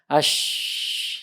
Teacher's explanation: Tersebarnya udara di mulut ketika mengucapkan huruf tersebut, yaitu huruf shin. Terutama ketika sukun itu lebih terasa tersebarnya ketimbang hidup. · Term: tafasyi